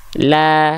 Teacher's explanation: karakternya tipis pelafalan fathahnya gitu oke maka dibacanya Gimana kalau dia fathahnya kadarnya tipis maka kita lafalkan buka mulut sambil senyum